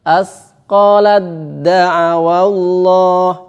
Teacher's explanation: Diidghamkan secara sempurna sehingga seakan-akan taknya tidak ada sama sekali. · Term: idgham kamil